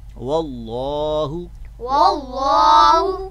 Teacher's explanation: یہاں پہ لفظ اللہ کا جو لام ہے اس کو ہم پر پڑھیں گے، کیوں؟ اس لیے کہ اس کا ماقبل جو پہلا والا حرف ہے اس کے ساتھ ملا رہے ہیں وہ مفتوح ہے، یعنی اس کے اوپر زبر ہے۔